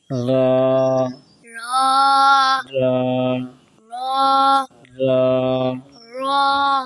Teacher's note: আচ্ছা, তোমার জিব্বার আগা উল্টা পিঠ, জিব্বার আগার উল্টা পিঠ, ঠিক আছে। জিব্বার আগার কি উল্টা পিঠ, তার বরাবর উপরে, তার বরাবর উপরে তালুর সঙ্গে লাগিয়ে, ঠিক আছে। তারপর উপরে তালুর সঙ্গে লাগাইয়া র এই যে আব্বা দেখি হা করো, হা হা এইখানে লাগাবে, হ্যাঁ হ্যাঁ হ্যাঁ, এই তো মাশাআল্লাহ।